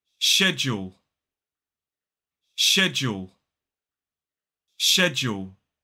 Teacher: it starts with that sh sound, not a sk sound. Now, schedule is more of an American pronunciation with that sk sound, but you will also hear plenty of native British English speakers saying schedule as well. · So it's 2 syllables, the stress falls on the first. So it's sh, j, and then that long oo vowel sound, and then ending in the dark L.